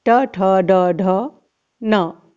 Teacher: टवर्ग, ट ठ ड ढ न। इनका उच्चारण मूर्धा से होता है, इसीलिए इन्हें हम मूर्धन्य व्यंजन भी कहते हैं।